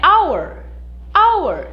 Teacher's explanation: Veja que o H, ele é mudo.